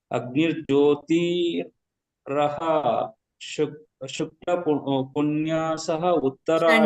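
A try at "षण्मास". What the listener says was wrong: ಷಣ್ಮಾಸ. ಪುಣ್ಯಾಸ ಅಲ್ಲ, ಅದು ಷಣ್ಮಾಸ. ಷಟ್ಮಾಸ ಅಂತ ಬರ್ತದೆ. ಅದು ಹೇಳುವಾಗ ಷಣ್ಮಾಸ.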